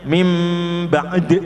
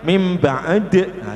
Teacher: huruf yang sukun Jangan dibaca seperti pepat tetapi agak dicepatkan